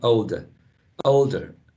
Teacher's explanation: we see that older is spelled o o-l-d-e-r but in general that's a schwa